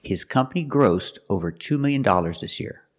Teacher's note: gross in the past grossed with a t sound